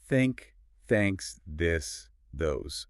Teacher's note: Tongue gently between the teeth, push air out, soft and airy.